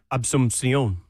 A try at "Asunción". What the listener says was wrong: Did you throw a B in there?